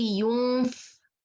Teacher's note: you can expect the next letter is fa. Why? Because my mouth is prepared to letter fa. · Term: إخفاء